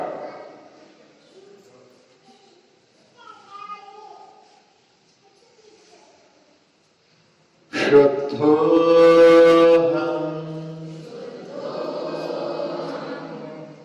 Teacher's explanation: शंकर का सा जिसको बोलते हैं उसका उच्चारण भी करने की विधा, दांतों में अपनी जिह्वा टच ना हो, दांतों के ऊपर तालु जिसको बोलते हैं वहां पर यदि अपनी जिह्वा टच होती है तब निकलता है श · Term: तालव्य श